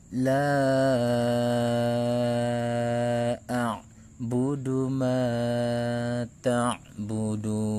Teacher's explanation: Mad tabi'inya adalah alif yang sebelumnya fathah dan hamzahnya adalah alif yang berharokat. Maka cara membacanya dibaca panjang 4 sampai 5 harokat. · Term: mad jaiz munfasil